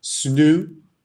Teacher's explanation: Eu grudo um som de consoante no outro som de consoante, né? Então o S com N vira snoo, né? Sna, vira um som só. E eu dropo ali o T também, né? Porque ao invés de falar what, snoo, eu falo snoo. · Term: Connected speech